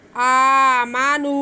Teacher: نون کی آواز جو ہے ناک میں نہ جائے، منہ کھول کے ادا کریں۔ آمنو، ڈائریکٹ آواز کو باہر آنے دیں، ناک میں نہ جائے۔